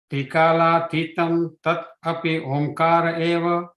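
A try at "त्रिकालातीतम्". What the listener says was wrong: Trikala titam. Ti, not titam. Titam. It is long.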